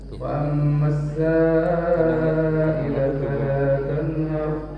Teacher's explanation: Sanya itu ada alif ketemu hamzah di bawah, itu mad wajib muttasil, harus panjang 5 sampai 6 harokat.